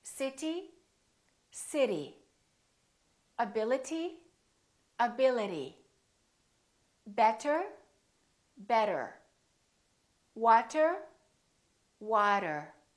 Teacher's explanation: the T didn't really sound like t, t. No, it didn't. It sounded more like a d sound